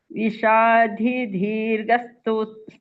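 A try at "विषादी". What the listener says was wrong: ವಿಷಾದಿ ದೊಡ್ಡ ದ ಇಲ್ಲ ಅಲ್ಲಿ ಮಹಾಪ್ರಾಣ ಇಲ್ಲ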